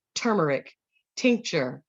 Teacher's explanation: the first letter t is a stop disrupts air flow quick sharp staccato